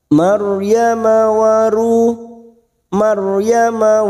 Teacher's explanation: ro sukun yang sebelumnya fathah kita baca tafkim atau tebal